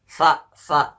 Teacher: Untuk huruf sa, cara membacanya adalah ujung lidah kita ditempelkan pada gigi kita paling atas